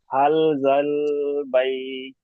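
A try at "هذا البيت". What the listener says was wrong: হাল নয়, হা খাড়া যাবার হা, জাল্লাম যাও জাল, হা জাল বাইত।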